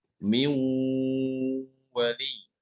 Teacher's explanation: Ini nunnya sukun, datang setelahnya huruf wawu, maka nunnya itu dimasukkan ke huruf wawu ini ya. Dibacanya dengan dengung